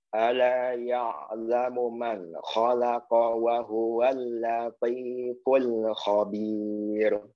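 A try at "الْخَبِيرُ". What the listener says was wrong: Ya, pokoknya tipis. Ya, khabir. Ya, jangan jadi posisi pipi ya. Antum ini posisi masih khabir. Jadi kesannya masih posisi ra fathah. Fathah him.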